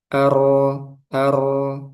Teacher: Jadi enggak mengalir, enggak juga syidah kuat tapi tengah-tengah. Ar ar enggak sampai kepanjangan ar enggak juga ar tapi pertengahan. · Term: bainiah